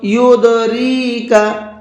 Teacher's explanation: جیسے کہ یہ دال یہاں پر ساکن ہے تو ہلکا سا آواز کو ڈبل کر کے پڑھیں گے